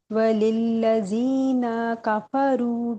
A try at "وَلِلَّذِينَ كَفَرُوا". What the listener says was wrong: ہاں لمبا ہو گیا